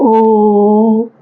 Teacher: जो ओ साउंड होती है उसको क्या करते हो, थोड़ा लंबा खींच रहे होते हो ना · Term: प्लुत स्वर